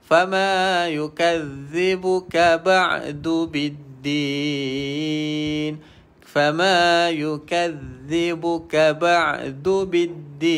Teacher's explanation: Zal, hujung lidah kita parking di antara gigi atas dan bawah, iaitu gigi kacip ataupun gigi depan. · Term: huruf zal